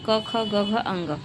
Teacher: जो क वर्ग है वो कंठ से उच्चारित होता है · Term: कंठ ध्वनियां